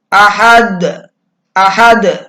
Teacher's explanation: Jadi dalnya ini dipantulkan dengan kuat. Makanya disebut dengan qalqalah kubra.